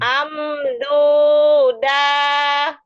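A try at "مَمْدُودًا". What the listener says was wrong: Setahu saya ini bukan A lah, mim. Mamduda.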